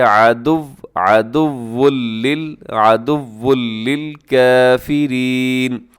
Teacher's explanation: عدو لل میں ادغام بغیر غننے کے ہے